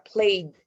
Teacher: si tiene voz, por lo tanto se pronuncia played, como una D